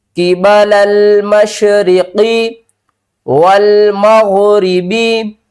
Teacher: قاف کو موٹا پڑھیں گے، غین کو بھی موٹا پڑھیں گے